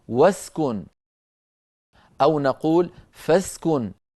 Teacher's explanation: همزة الوصل في درج الكلام وفي وصل الكلام تسقط، فنقول مثلا بدءا نقول أسكن، وإذا وضعنا قبلها واوا أو فاء نقول واسكن، أو نقول فاسكن، فتسقط الهمزة وصلا.